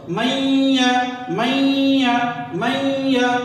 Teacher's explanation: میم یا زبر مئی، آواز ناک میں، نون کی ہلکی سی مطلب فیلنگ ہوگی، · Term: گننا